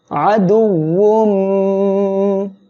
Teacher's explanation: তানবিনের পরে ঈদগামে বা গুন্নার অক্ষর মিম আসছে, গুন্নার সাথে মিলিয়ে পড়বেন।